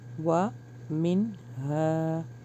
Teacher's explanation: یہاں پہ نا اظہار ہو رہا ہے، یہاں پہ اخفا نہیں ہو رہا. و من کیونکہ آگے جو ہے حرف حلقی ہے.